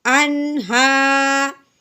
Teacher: हमज़ा नून ज़बर अन, हा खड़ी ज़बर हा। खड़ी ज़बर है, एक अलिफ के बराबर लंबा करेंगे।